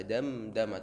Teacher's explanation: ucapan huruf mim dan Nun itu adalah huruf yang pasti masuk hidung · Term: dengungnya